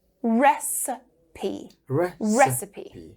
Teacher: We stress the first one and the second is a schwa.